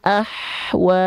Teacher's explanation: gak boleh ada Jedah heninguan Ahwa itu enggak enggak boleh ya harus mengalir semua tanpa adanya Jedah antara ha kecil Sukun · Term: hams